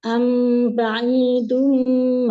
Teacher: huruf Dal e tidak ada nafasnya ya Dal tertahan nafas